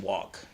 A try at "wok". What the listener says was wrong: No L.